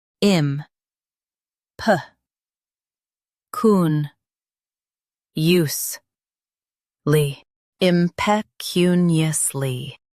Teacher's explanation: Stress cun and keep eus light.